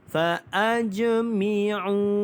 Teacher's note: huruf jim yang ada tanda mati asal, maka dia adalah qalqalah sughra